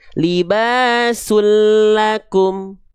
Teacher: Lalu karena dia idgam bila gunah, ketika n-nya lebur kepada huruf lam, leburkan tanpa dengung, tanpa masuk hidung, berarti enggak perlu ditahan